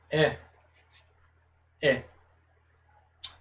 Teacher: E o último exemplo, shevá composto de segolo. Esse segolo representa a vogal E, um E mais aberto e um E mais alongado, um pouco mais alongado.